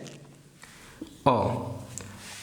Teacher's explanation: অর্থাৎ পিছনের দিকে যায়। আমাদের জিহ্বার অবস্থানটা তখন অ যখন উচ্চারণ করি তখন আমাদের জিহ্বার অবস্থানটা যায় পিছনে। এবং সেখানে এবং এটা এই এটারও ক্ষেত্রে একই রকম হয়ে থাকে যে আমাদের ঠোঁটের যে আকৃতি সেটা হয়ে থাকে অর্ধ বিবৃত। · এরপর আমাদের আরেকটা জিনিস রয়েছে সেটা হচ্ছে অ আমরা যখন স্বরধ্বনি অচ্চারণ করি তখন আমাদের এই যে জিহ্বার উচ্চতা এটা হয়ে থাকে নিম্নমধ্য